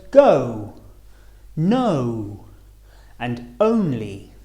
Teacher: the shape of the lips rounding a little as we say the sound o. Starting on the uh and finishing on the uh or uh o as in the words go, no, and only.